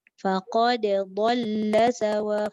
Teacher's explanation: Faqad qalqalah, lepas tu dhal tu tebal.